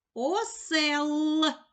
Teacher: ми чуємо звук твердий л